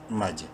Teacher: میم مشدد ہے غنہ کریں گے اور جیم سے ملاتے وقت جیم پہ قلقلہ کرنا ہے ، جیم حروف قلقلہ میں سے ہے جو کہ 5 ہیں،